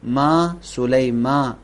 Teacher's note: میم کے اوپر زبر ہے، اس زبر کو تھوڑا سا کھینچیں گے